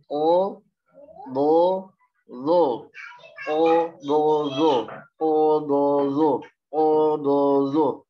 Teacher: O pangkal lidah, do pinggir lidah, zo ujung lidah. Ya, dari pangkal ya, kemudian masuk ke pinggir, kemudian ke ujung.